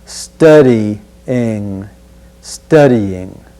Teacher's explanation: notice there's no hard g at the end of the word